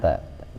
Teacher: jadi kalau ta itu cuma sampai gigi aja. Kalau dal sampai gusi.